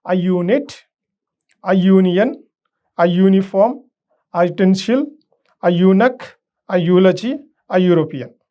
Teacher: Words beginning with U or EU have initially Y sound.